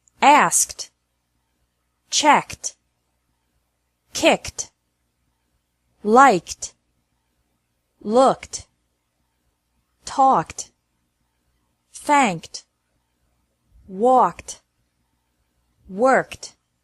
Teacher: e d is pronounced like T after verbs ending with a k sound